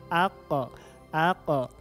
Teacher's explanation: Huruf qaf ini ketika sukun atau mati, maka sifatnya adalah qalqalah